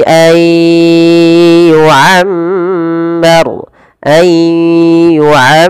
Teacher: Ayyu'ammar, bukan ayyu tapi ay, masukkan ke rongga hidung karena di sini ada idgham bi gunnah